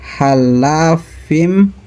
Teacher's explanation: Selanjutnya ada halafim itu idgham bigunnah karena ada tanwin kasrah bertemu huruf mim. Cara bacanya tanwin kasrah dimasukkan mim sambil berdengung.